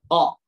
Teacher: tempat keluarnya ko ini adalah di pangkal lidah, disentuhkan ke daging lunak yang ada di atas tenggorokan kita itu, ya. Jadi ditekan aja nih daging di sini, boleh teman-teman sambil menerapkan, tekan ke atas saja. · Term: huruf Ko